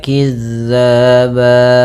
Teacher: zal ini pelafalannya dari ujung lidah kita menempel dengan gigi seri atas kita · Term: huruf dal